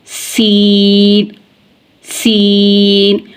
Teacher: नोक की ज़ुबान जब सनाया उलिया और सुफला दोनों किनारों के बीच में आएगी तो सीन अदा होगा, सीन, सीन, और इसकी आवाज़ मिसल सीटी के निकलेगी।